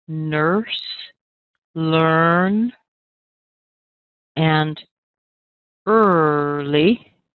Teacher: For the words like nurse, learn, and early, these all have what I call a basic sound. Just notice when the sound is being made, you don't have opening and closing of the jaw.